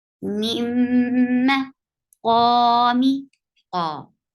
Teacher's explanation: Qa is 2 counts long, and it is on the heaviest form of tafkhim.